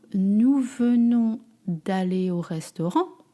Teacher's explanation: You notice that I drop the E in front of the vowel.